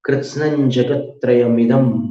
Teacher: अनुस्वार को ज में मिलाना